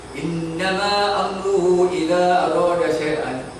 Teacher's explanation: Patutnya kita baca innama wajibul gunah 3 harakat.